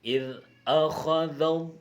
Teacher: huruf lam hendaklah dilafaz dengan lafaz tafkhim, tebal. Ini bukan tarsis lah, tebal.